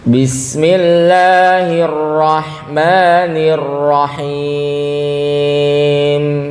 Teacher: Selain lamnya di sini cuma 2 harokat, mimnya juga cuma 2 harokat saja, jangan kepanjangan.